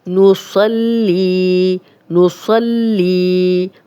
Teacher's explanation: صاد موٹا پڑھیں گے اور لام کو 2 بار پڑھیں گے، ایک دفعہ صاد کی زبر کے ساتھ، ایک دفعہ لام کی زیر کے ساتھ، اور آگے یا پہ جزم ہے تو یہ 2 حرکات لمبا پڑھیں گے.